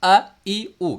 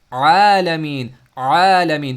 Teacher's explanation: If you stop your breath, that is Hamza, not Ain.